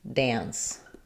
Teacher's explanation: So I think the reason they're telling you to think of it as having a T sound is because you need to make the N nice and short, like you would if there were a T there